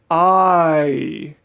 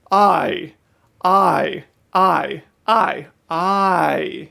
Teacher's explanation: if you say I really slow it goes I it's actually the vowel I is not its own mouth shape it is the transition from a to e